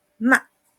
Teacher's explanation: el cuarto tono es cortante, firme.